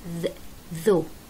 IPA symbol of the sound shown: ð